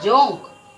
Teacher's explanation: जोंक में भी नासिका और मुंह दोनों का प्रयोग किया जा रहा है।